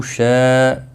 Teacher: شاء مد متصل ہے 4 الف کے برابر کھینچ کر پڑھیں گے